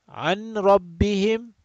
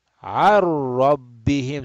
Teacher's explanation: So, this noon is gone. Noon is gone. There's no nasal sound at all. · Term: idgham bila gunna